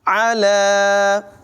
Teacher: आइन की आवाज़ हलक़ के दरमियान वाले हिस्से से अदा होगी। लाम पर खड़ी हरकत है।